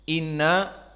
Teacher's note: musyaddadah maka di Ilmi tajwid memberikan wajib dan sunnahnya dua harokat makhrajnya berpindah kepada khoisum makhroj hidung